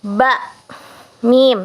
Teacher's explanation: Nah, ini bila ditinjau dari faktor daerah artikulasi, konsonan dapat bersifat sebagai berikut, yaitu yang pertama bunyi bilabial atau syafataniyah atau huruf bibir, yaitu bunyi yang dihasilkan dengan cara mempertemukan antara bibir atas dengan bibir bawah. Kedua bibir tersebut terkatup rapat sehingga udara dari paru-paru tertahan untuk sementara waktu sebelum ketupan itu dilepaskan.